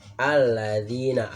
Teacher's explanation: Alladzina, alif lam syamsiyah, karena apa? Karena itu ada tasdid di lamnya, jadi dibacanya tebal di hurufnya. Alladzina, alif lam yang ada tasdidnya ya.